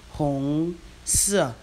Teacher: Hong is the second tone. Si is the fourth tone.